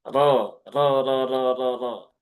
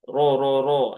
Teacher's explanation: Maka rnya ini dibaca dengan tafkhim ya, dengan tebal. Ro ro ro ro ro bukan ro ro ro ro ro.